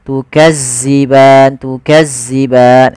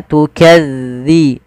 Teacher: tipis dalalnya tidak ada desis